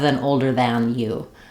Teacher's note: I don't open as clearly for that ah vowel because it's a reduced ah. We use this reduced ah sound with a more closed mouth in other words that are unstressed and unimportant.